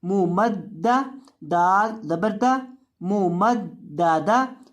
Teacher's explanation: मीम पेश मुँह, मीम ज़बर दाल मद, मुँह मद, दाल ज़बर दा, मुँह मद दा। दाल को सख्ती के साथ पढ़ेंगे, दाल के ऊपर तशदीद है।